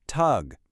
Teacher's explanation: That G at the end is going to sound like a ka, so we say talk.